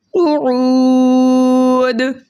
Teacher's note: اور ہم دال کو قلقلے کے ساتھ پڑھیں گے